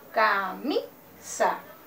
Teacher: la mayor fuerza de voz recae en la sílaba mi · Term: sílaba tónica